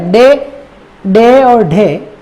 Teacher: अब आप जब कंप्लीट करोगे, जीभ देखो कहां जा रही है, मुर्दा पे को स्पर्श करके फिर नीचे आ रही है। यानी एक ही वर्ण के उच्चारण के दौरान जीवा दो दो उच्चारण अवयवों को स्पर्श करती है, दो दो ध्रुवों की ओर स्पर्श करती है, दो दो उच्चारण स्थानों को स्पर्श करती है, दो दो उच्चारण स्थानों को स्पृष्ट यानी छू रही है। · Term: द्विस्पर्शी